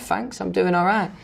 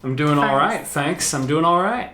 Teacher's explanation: Another thing that I noticed is that both of them pronounced TH as an F.